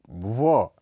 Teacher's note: व, यह अल्प प्राण घोष ध्वनि है, इसके उच्चारण में दोनों होंठ गोल होकर श्वास वायु को हल्का सा निकालते हैं। इसके अलावा इसमें जीभ का पिछला हिस्सा कोमल तालु की ओर उठ जाता है।